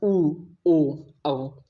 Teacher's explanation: जैसे आ, अभी आप बोल रहे हैं तो पूरा मुख खोल के बोल रहे हैं, इसमें कोई वृत्त नहीं बन रहा है, लेकिन ऊ बोलेंगे तो उसमें आपका मुख से वृत्त बनेगा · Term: वृत्तमुखी स्वर